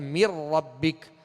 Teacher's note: میم کو را سے ڈائریکٹ ملائیں گے اور نون اس میں داخل ہو گیا